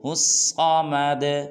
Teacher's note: دال کو خوب قلقلہ کرنا ہے